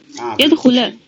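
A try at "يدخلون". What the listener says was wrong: خلا کیوں خلو. نہیں یفعلا تو نہیں لگا ہوا. یفعلو ہی لگا ہوا ہے. یدخلو سب یہی.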